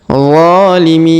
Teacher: Perhatikan huruf Za kita panjangkan 2 harokat karena alif kecil di atasnya